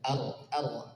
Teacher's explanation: ra sukun sebelumnya fathah maka tebal